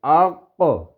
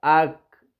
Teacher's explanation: بڑے قاف میں تو ہم زور لگاتے تھے نا، آق موٹی کر کے آواز کر کے